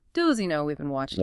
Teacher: In fast, casual speech, both those H sounds are likely to be reduced or dropped. It might sound more like, does he know we've been watching him?